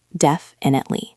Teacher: Try to keep the stress on the first syllable.